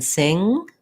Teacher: so i call that the n-g sound it sounds like um it's with the back of the tongue lifting